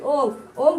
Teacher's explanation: ओम के उच्चारण में 3 गुना समय लगता है